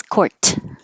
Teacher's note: court so this little mark here is to remind you to hold your tongue in the t position and don't release court just hold it court so if it was the last